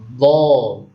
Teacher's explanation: memanjangkan suara dari permulaan di tepi lidah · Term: istitalah